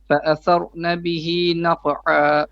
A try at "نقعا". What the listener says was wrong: Make your qa a bit more pronounced. نقعا. The qa. The qa.